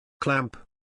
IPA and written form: klæmp (Clamp)